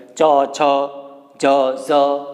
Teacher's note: ચ તાળવામાંથી, બરાબર, તાળવાને જીભ સ્પર્શે, તાલવ્ય જેને કહેવાય.